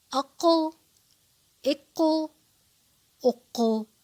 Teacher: ساکن کرنے کی صورت میں اس کی آواز پلٹ رہی ہے، باؤنس کر رہی ہے، یعنی کہ اس پہ قلقلہ ہو رہا ہے، اور یہ حروف قلقلہ میں سے ایک حرف ہے۔